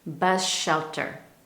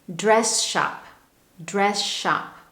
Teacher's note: when an S blends with a sh the resulting sound is sh that S really disappears. For example, the S in the word bus blends with the in shelter bus shelter, we almost lose that clear S sound at the end of bus bus shelter.